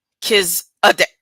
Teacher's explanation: the emphasis on the second syllable Kiz and the sound, UH, is pronounced quickly and lightly. The final syllable deck is pronounced with a short E sound.